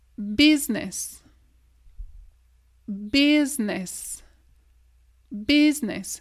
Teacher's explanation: C'est à peine, on entend à peine le I ici. Business. Oublie le I.